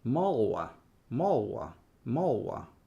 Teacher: Yeah, the L will start to disappear.